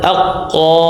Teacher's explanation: pangkal lidah yang menyentuh atau membentur langit-langit atas yang berdaging. Nah, darinya keluar huruf qaf